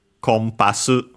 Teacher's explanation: It's at the very bottom compass. And so the uh n in the middle because there's a following p becomes m